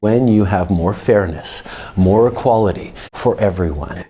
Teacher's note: he applies a low breathy voice which makes him sound calm and pleasant